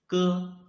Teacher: you can clearly feel that the root of your tongue is blocking the airflow